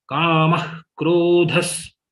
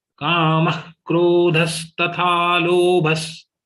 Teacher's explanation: Visarga of ma will be kha. Visarga of bha will be like sa.